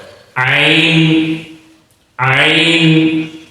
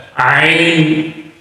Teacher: پہلا حرف ہے عین، بالکل حلق کے درمیان سے، یہ جو حلق کی یہ جگہ ہے یہاں سے یہ حرف ادا ہوتا ہے، عین عین، ذرا اس پر حلق پر زور دینا پڑتا ہے، عین۔